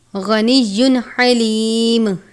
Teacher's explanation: اظہار کا قاعدہ لگتا ہے، یعنی تنوین پر غنہ نہیں کریں گے۔